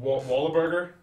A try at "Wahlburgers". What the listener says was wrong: Wahlburgers. Why did you add a syllable to their name that you just said? Wahlburgers.